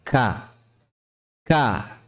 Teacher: Huruf 'K' memiliki makhraj di pangkal lidah. Bagian paling belakang menyentuh langit-langit mulut di antara bagian tulang atas dan bagian lunak, yaitu daging di bagian paling belakang. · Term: kaf, huruf kaf